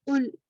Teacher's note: قل، کاف موٹا والا ہے، اس کا آپ نے کل نہیں پڑھنا. کل کا مطلب ہوگا کھاؤ.